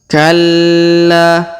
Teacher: Huruf la di sini perhatikan ditahan dan ditekan terlebih dahulu. Kemudian kita panjangkan 2 harokat karena terdapat alif di depannya.